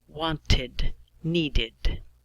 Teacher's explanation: If your verb sound ends in a D or a T, then we pronounce an extra syllable of id